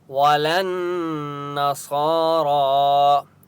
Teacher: ولن نون کے اوپر تشدید ہے اس لیے یہاں پر غنہ ہوگا۔ صارا، صاد کے اوپر کھڑا زبر ہے اور را کے اوپر بھی کھڑا زبر ہے، ان دونوں کو ایک ایک الف کی مقدار کھینچ کر پڑھیں گے۔